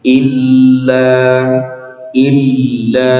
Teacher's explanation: Di ayat ini pertama huruf il ya Pak, lam bertasydid kita tekan